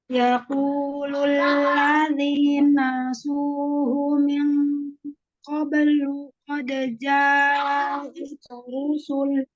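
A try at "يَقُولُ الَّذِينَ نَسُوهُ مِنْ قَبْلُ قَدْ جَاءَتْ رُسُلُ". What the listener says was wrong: Pertama, Ana tadi dengarnya nunnya cuma 1 kali di sini, Ifon. Jadi hati-hati. Alladzina na. Di situ ada nanya 2 kali.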